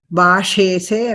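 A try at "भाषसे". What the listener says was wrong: bhashase. Atra ekara nasti. In Madhyama Purusha ekavachanam, there is no bhashese. It is bhashase. Bhashase.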